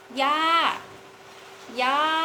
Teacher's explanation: konsonan kelas rendah yang mempunyai maktun mai'ek, sehingga dia mendapatkan nada jatuh ya, falling tone, sehingga dia ya-nya ini dibaca dengan nada jatuh ya, sehingga dibaca ya, ya, yang berarti nenek ya.